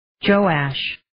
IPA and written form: 'dʒoʊæʃ (Joash)